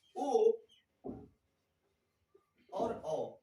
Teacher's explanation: जैसे में ओ और औ, जब आप इसे उच्चारण करेंगे तो आप देखेंगे कंठ से भी और ओठ से भी दोनों से आवाज निकलती है। ओ और औ, कंठ और ओष्ठ दोनों से मिलकर निकलती है।